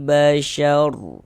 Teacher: huruf r sukunnya dibaca tabkhim juga dibaca tebal